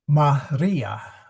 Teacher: Maria, the second syllable, second from the end is long. Okay, that is a long I so that's where it gets accented.